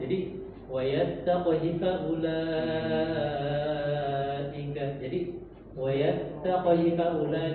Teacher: Di kalimat wayattaqi itu ada namanya ihtilas. Ada namanya ihtilas, yaitu dipercepat bacanya